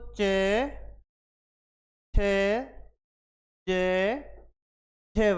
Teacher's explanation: स्वर तंत्र में स्पर्श के साथ एक संघर्ष महसूस हो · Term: स्पर्श संघर्षी